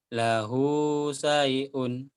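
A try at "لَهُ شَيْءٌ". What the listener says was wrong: Lahu syai'un shin. Kurang ini. Shin, syai'un. Lahu syai'un shin.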